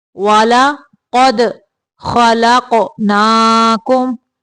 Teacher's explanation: वाव की अदायगी के वक़्त होंठों को गोल करना है, दांतों का इस्तेमाल नहीं करना। वाला कद, कॉफ को मोटा पढ़ेंगे और दाल को कलकला करेंगे। वाला कद खलकनाकुम, कॉफ को यहाँ पे भी जो कॉफ है ये भी कलकला है, इसको कलकला करना है।